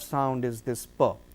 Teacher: it will be voiceless, bilabial, plosive